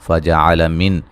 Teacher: نون ساکن کا اظہار ہے، غنہ نہیں کریں گے